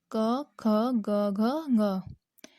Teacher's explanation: क वर्ग क ख ग घ ङ, कंठ द्वारा बोला जाता है